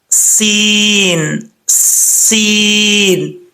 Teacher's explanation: سین کا مخرج بھی وہی ہے جو زا کا میں نے آپ کو بتایا تھا، یہ بھی ویسے ہی پڑھا جائے گا۔ سین جو ہے سیٹی کے ساتھ پڑھا جائے گا، بغیر سیٹی کے پڑھیں گے تو سمجھ لیجئے گا کہ سین جو ہے وہ اپنے مخرج سے ادا نہیں ہوا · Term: سیٹی کی آواز